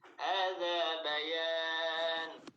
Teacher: Tanwinnya terbaca. Kalau misalkan kita waqaf, tanwinnya hilang, berhenti misalkan.